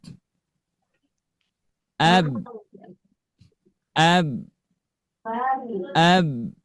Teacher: Makhraj huruf ba keluar dari bibir merata pada kedua bibir